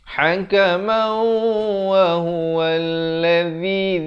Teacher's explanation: Di sini idgham bi gunnah. Asalnya hakaman. Tapi bila datang waw, masuk beserta dengung 2 harakat. Hakamau wa huwa alladhi, di ujung lidah.